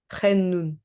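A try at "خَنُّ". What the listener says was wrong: Ouais, juste c'est nous parce qu'il n'y a pas de tanwin. Donc pour cet exercice, faut juste se rappeler que quand il y a une shadda, on accentue et il y a comme vous dites, comme une pause.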